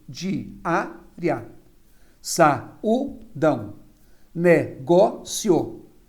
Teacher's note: Realmente, eu tenho a penúltima sílaba tônica. Todas são paroxítonas